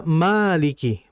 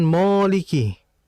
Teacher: Karena sebelum huruf alif, ada huruf 'mim', dan 'mim' adalah huruf yang tipis, jadi dibaca ' maliki', bukan 'moliki'.